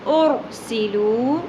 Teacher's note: سین سیٹی کے ساتھ، واو حرف مدہ ایک الف کے برابر کھینچنا ہے،